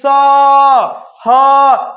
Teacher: जब भी आप बोलेंगे स, ह, तो ऐसे देखिएगा थोड़ा सा गर्म हवा निकलता है · इनका उच्चारण रगड़ या घर्षण से उत्पन्न ऊष्म वायु से होता है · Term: ऊष्म व्यंजन